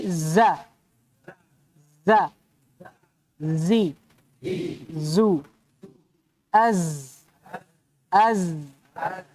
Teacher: Zai ini dengan sin dia punya sifat namanya safir.